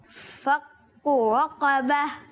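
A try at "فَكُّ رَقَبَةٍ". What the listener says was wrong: فک کو کاف باریک رکھنا ہے. دوبارہ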